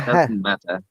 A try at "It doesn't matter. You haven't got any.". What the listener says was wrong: It doesn't matter. You haven't got any. You have to pronounce it quickly, faster.